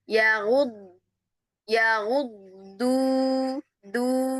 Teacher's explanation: kalau Ibu dengar dnya di ujungnya itu tipis, nah itu berarti sudah pindah ke dal.